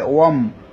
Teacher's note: এখানে ওয়াও গিয়ে মিমকে ধরেছে, ওয়াম হবে।